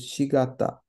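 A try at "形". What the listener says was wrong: This is ka, ta, chi. You had all the... You knew it was three sounds long. Tachi.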